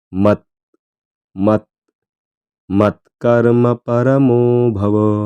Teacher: त्याचा अगदी थोडासा उच्चार आला पाहिजे पूर्ण त स्पष्ट म्हणायचं नाही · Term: जोडाक्षर